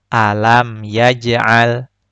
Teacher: pantulannya kecil dan pantulannya tidak terputus karena tertutupi atau tertimpa dengan bacaan setelahnya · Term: Qolqolah Sugro